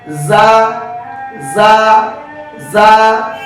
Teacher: যা হরফটি পড়ার সময় আওয়াজ নরম হবে, চিকন হবে, নিচের দিকে দাবিত হবে, বাতাস বন্ধ, আওয়াজ চালু। লক্ষ্য করুন যা যা যা। · জিহ্বার আগা সামনের নিচে দুই দাঁতের আগার সঙ্গে লাগিয়ে যা হরফটি উচ্চারিত হয়। যা হরফটি পড়ার সময় জিজি পোকার আওয়াজ হবে।